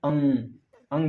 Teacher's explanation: इसमें मुंह और नाक दोनों आ रहा है, मुंह भी आ रहा है और नाक भी आ रहा है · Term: अनुनासिक